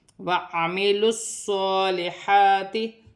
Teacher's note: صاد موٹے حرف میں سے ہے، سیٹی والا حرف ہے، مشدد ہے